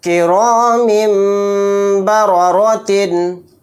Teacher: میم کو میم کے ساتھ ملا دیں گے اور نون کو یہاں پر سائلنٹ کر دیں گے، یعنی میم کو چھوٹے میم میں ملا کر غنہ اور اخفا کے ساتھ اس طرح پڑھیں گے۔